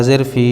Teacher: یا ساکن سے پہلے فا کے نیچے زیر اس لیے مدہ ہوگا، ان کو تھوڑا کھینچ کر پڑھیں